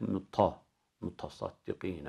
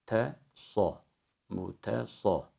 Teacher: Burada ilk kelimeyi okurken sat harfini T harfine transfer etmemek gerekiyor. Yani sat harfinin kalınlığını T'ye sirayet ettirirsek muta.